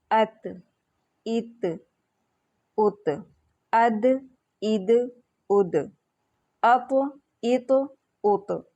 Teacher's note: زبان کی نوک اور سامنے کے اوپر والے 2 دانتوں کی جڑ سے ادا ہوتے ہیں